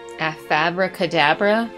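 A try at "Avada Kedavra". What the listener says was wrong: Avada cadabra. Not abracadabra.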